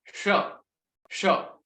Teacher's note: उसके बाद जो शकार है, शकार, जिसमें जो जिह्वा जो है उसका ऊपर जो लिप, ऊपर जो उसका जो सॉरी जो टिप है, जिह्वा का जो टिप है वो ऊपर टच हो रहा है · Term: मूर्धन्य शकार